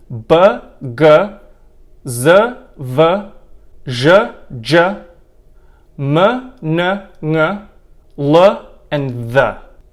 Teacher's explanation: voiced consonants which are consonants which are made with vocal chord vibration